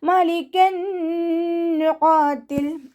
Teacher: തെൻവീനിന് ശേഷം ഇതാ ബിഗുനയുടെ അക്ഷരമായിട്ടുള്ള നൂന് വന്നു. അപ്പോൾ തെൻവീനിലുള്ള നൂനിനെ അടുത്ത നൂനിലേക്ക് ലയിപ്പിച്ച് ഉന്നയോടുകൂടി ഓതി കൊടുക്കുക.